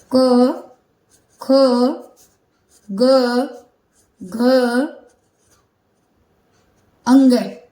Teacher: इन वर्णों का जब हम उच्चारण करते हैं तो हमारे गले से आवाज निकलती है तोय इनका उच्चारण स्थान क्या होगा कंठ होगा कहां से आवाज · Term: क वर्ग